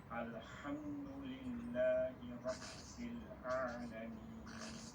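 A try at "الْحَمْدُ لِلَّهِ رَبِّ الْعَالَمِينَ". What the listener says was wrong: Hanya sedikit saja, jangan sampai agak tebal, sedikit saja.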